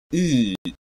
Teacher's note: Close back unrounded vowel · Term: Close central unrounded vowel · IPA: ɨ